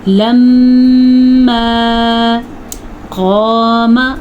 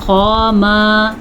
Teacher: لَمَّا قام، الف مدہ اور موٹا قاف، الف بھی ادا کرنا ہے اور موٹا قاف بھی ادا کرنا ہے۔ البتہ میم کو ذرا بھی ہم لمبا نہیں کریں گے، بعض لوگ پڑھتے ہیں قاما تو وہ غلط ہے۔